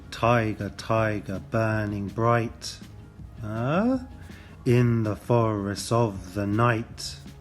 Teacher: each line is missing the unstressed beat of the trochaic foot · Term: masculine ending